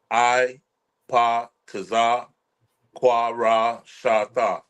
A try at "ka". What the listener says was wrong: Make sure you make a difference between both of the ka. Yeah, ka, you have ka. When you say ka twice, they probably thinking that you said it twice. Make sure you just make a difference between the two.